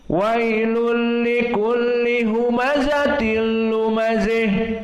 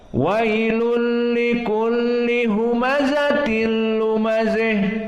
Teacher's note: condong dari fathah kepada kasrah dan hampir mendekati kasrah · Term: al-imalah al-kubra